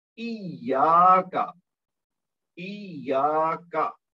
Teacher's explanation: یا کو لمبا کرنا ہے کیونکہ اس کے بعد الف مد ہے، لیکن کاف کو لمبا نہیں کرنا کیونکہ اس کے اوپر صرف ایک زبر ہے، ایک حرکت دیں گے۔